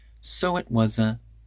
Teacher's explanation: that t in it becomes a glottal stop so it was a and then we connect was uh together